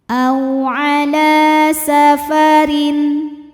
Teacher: huruf lam berbaris fathah panjang, maka dibaca panjang, lamnya 2 harokat